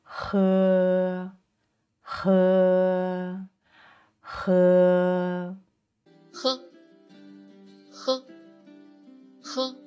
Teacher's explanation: this time is the back of the soft pallette and then try to let the air flow out so the sound is aspirated just as in the English word happy